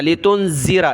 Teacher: नून पर नाक में आवाज़ पैदा करनी है, ये ज़ाल है, इस पर ज़बान निकाली जाती है, नरमी के साथ पढ़ें।